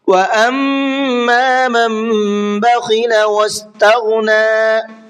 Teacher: میم کے اندر غنہ کریں گے اس لیے کہ میم کے اوپر تشدید ہے